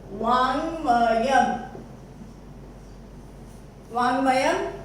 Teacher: क अपने ही वर्ग का पंचम हो जाएगा क्योंकि सामने है अनुनासिक म। क वर्ग का पंचम है क ख ग घ ङ, यानी कि आपका वर्ड बन गया फाइनली वाङ्मयम्।